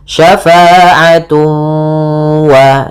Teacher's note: Kemudian pada lafal tun ketemu waw lagi sama sebagaimana syai'an, yaitu ada idgham bi gunnah, cara membacanya ditahan suara wawnya, syafa'atu wa, sambil dimasukkan ke rongga hidung